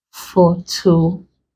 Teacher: You place the stress on the syllable before last. So this is the last, this is the one before it. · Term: penultimate